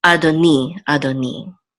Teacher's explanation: And the accent here is this. And so the accent will be on the last syllable